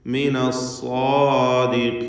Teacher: സ്വാദിഖീൻ എന്നതിൽ സ്വാദിനും അലിഫിനും തഫ്ഖീമാണ്. തടിപ്പിച്ച സ്വരഭാരത്തോടെ സ്വാദിനെയും അതിൻ്റെ ദീർഘാക്ഷരമായ അലിഫിനെയും ഉച്ചരിക്കണം. ഖാഫിന് കസ്റ അതുകൊണ്ട് കുറഞ്ഞ തഫ്ഖീം ഖാഫിനും വരുന്നു.